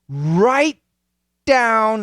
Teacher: it's a stop T. Right. But I don't finish. Right down, and then I go right to the D, same position.